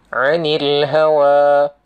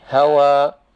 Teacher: Hawa ni panjang dia kan 2 harakat. Hawa, kalau waqaf berhenti, hawa.